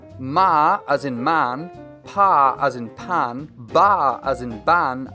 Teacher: Here the obstruction is created using both the upper and lower lips. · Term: Bilabial